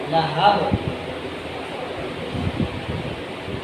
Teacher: با ساکن کریں گے وہیں پہ ہونٹ بند کریں گے تو کلکلہ نہیں ہوگا